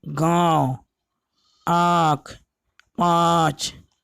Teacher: इसके उच्चारण के समय हवा मुख के साथ नाक से भी निकलता है, उसे अनुनासिक कहते हैं।